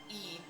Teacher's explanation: English e sounds more tense because it's slightly more fronted the tongue is even closer to the pallette producing this this tense sound